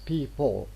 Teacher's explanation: A pure alveolar lateral, we pronounce it as L. But L in people, it's not people, it's people. What you obtain is a dark L